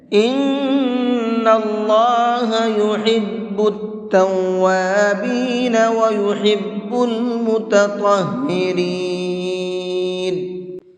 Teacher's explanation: نون کے اندر غنہ کریں گے اور اللہ کے لام کو منہ بھر کے پڑھیں گے